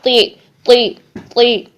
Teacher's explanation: زیر میں جھکاؤ جو ہے وہ نیچے کی طرف ہوتا ہے، تب بھی اس حرف کو موٹا ہی رکھیں گے